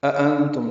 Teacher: أأنتم دو حمزے ہیں، دوسرا حمزہ تسہیل سے پڑھا جائے گا۔ پہلا حمزہ بالجہر پڑھیں گے، نون ساکن پہ اخفا ہے، میم ساکن پہ اظہار شفوی ہے۔